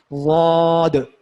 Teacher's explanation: تو ضاد کو موٹا کر کے پڑھنا ہے، اور زا کی طرح بھی نہیں پڑھنا اور دال کی طرح بھی نہیں پڑھنا ہے، ان دونوں کو کی درمیانی کیفیت جو ہے وہ ضاد کی ہے، ٹھیک ہے۔ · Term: موٹے حروف